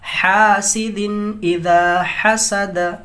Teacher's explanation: تنوین یا نون ساکن کے بعد اگر حروف حلقی میں سے کوئی اگر حرف آئے تو اظہار ہوگا. بلا غنہ کے ہم پڑھیں گے جلدی سے، اس کو اظہار کہتے ہیں